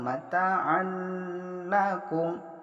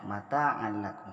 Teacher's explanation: memasukkan atau meleburkan nun mati tanwin tanpa disertai dengan dengung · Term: idgham bilagunnah